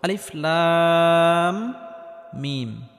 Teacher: না শুরুতে আলিফ এই আলিফটি কোন টান হবে না লাম এখানে লামটি চার আলিফ পরিমাণ লম্বা করে টানতে হবে · মিমটি গুন্নাহ করে পড়তে হবে কারণ মিমে বা নুনে তাসদিদ হলে গুন্নাহ করে পড়তে হয় এবং মিমটি গুন্নাহ করার পর মিমটি আবার চার আলিফ পরিমাণ · এই লাম হরফটি 4 আলিফ পরিমাণ লম্বা করে টানার পর মিম হরফটির সাথে গিয়ে লাগবে, কারণ মিমের উপর তাসদিদ রয়েছে। আর মিমটি গুন্নাহ করে পড়তে হবে, কারণ মিমে বা নুনে তাসদিদ হলে গুন্নাহ করে পড়তে হয়।